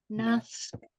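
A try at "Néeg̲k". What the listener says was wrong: Good. So yeah, that pinched S is gonna sound real sharp.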